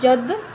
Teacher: اب دال جو ہے حروف قلقلہ میں سے ہے تو ہم اس پر قلقلہ کریں گے